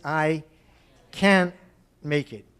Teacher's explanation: American is I can't make it. So the T disappears